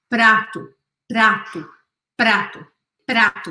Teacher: quando você fala prato, você sente que a sua língua dá uma vibradinha na ponta da língua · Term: R do português